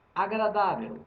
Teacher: Agradável não é proparoxítona, é paroxítona. A sílaba tônica é a penúltima.